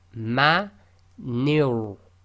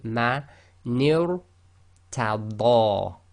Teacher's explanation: you've got to go ni, which is empty mouth, light, to ra, which is heavy, tafkheem